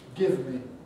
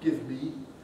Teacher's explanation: And we even have this with me, as we saw, give me, not give me. It's just a switch from the fleece vowel to the happy vowel.